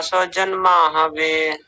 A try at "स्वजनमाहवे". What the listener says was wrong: स्वजन, न को पूरा कीजिए, स्वजन नहीं, स्वजन।